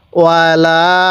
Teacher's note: ওয়াও জবর ওয়া, লাম আলিফ জবর লা, এখানে 3 আলিফ টান দিব।